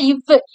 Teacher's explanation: இவ்வு அப்படின்னு சொல்லும் போதுதான் கீழுதடு போய் மேல்வாயோடைய அந்த மேல்வாய் பல்ல போய் தொடும்.